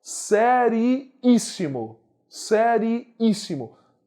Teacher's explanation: Antepenúltima sílaba é mais forte.